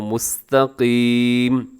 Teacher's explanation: آپ نے کیا کرنا ہے جی، قاف کو موٹا پڑھنا ہے، اور مستقیمن لکھا ہوا ہے لیکن وقف کریں گے تو مستقیم ایسے ہو جائے گا